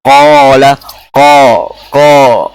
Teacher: Jadi alifnya juga ngikutin qafnya. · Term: alif tafkhim